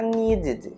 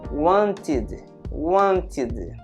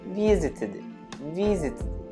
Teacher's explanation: É como se eu colocasse um i entre os dois Ds, para justamente não ficar uma coisa junta. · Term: som de id